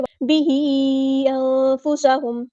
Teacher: disconnected مد ہے، مد منفصل ہے، مد دکھ رہی ہے، پھر اگلے کلمے میں حمزہ ہے، اس کو 2 یا 4 کاؤنٹ لمبا کرنا ہے، انفسہم نہیں پڑھنا، نون کی آواز کو ہم ظاہر نہیں کریں گے، چھپا دیں گے